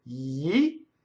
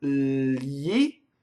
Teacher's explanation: We know that we go li by making a yi preceded by a voiced L. So we end with yi, and then we have li, and then we have Agli.